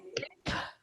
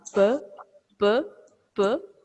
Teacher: It is not simply P. We have to release a lot of force, energy along with this.